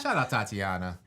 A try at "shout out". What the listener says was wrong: Yeah, that is shout out to Tatiana, because it sounded like you said, shut up, Tatiana. Shout out to Tatiana.